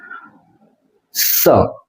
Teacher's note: દાંતની બાજુમાં રહે છે ને હવા હવા પસાર થાય છે સ દાંતની ઉપર પેઢાથી થોડીક દૂર દાંતની નજીક એમ રહીને હવા પસાર થાય એટલે સ નું ઉચ્ચારણ થાય છે શરણાઈનો શ એનું ઉચ્ચારણ ત્યાંથી